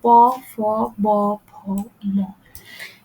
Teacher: দেখেন প ফ ব এগুলো ব্যবহার করার সময় আপনার মেডি ঠোট দুই পাশে দুই ঠোটটা লাগছে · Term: উষ্টধ্বনি